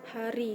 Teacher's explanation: glotal, yaitu dihasilkan dengan hambatan yang terjadi di pita suara, contoh H seperti H dalam kata hari dalam bahasa Indonesia.